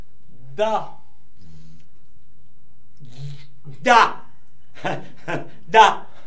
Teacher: se prononce en donnant du bout de la langue au-dessus des dents d'en haut. Da. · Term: la consonne D